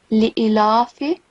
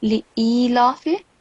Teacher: because alif is followed by ya of elongation, so make sure that you prolong it for at least 2 seconds consonant beats